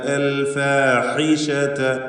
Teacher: ഹാഇ വ്യക്തമായി മഖ്റജിൽ നിന്ന് ഉച്ചരിക്കുക. തൊണ്ടയുടെ മധ്യമാണ്, ഹൽഖിയായ അക്ഷരമാണ്.